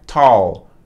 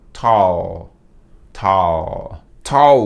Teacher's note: colocando a ponta da língua lá no céu da boca quando você termina a pronúncia